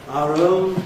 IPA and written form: ˈɑːr ˋəʊn (our own)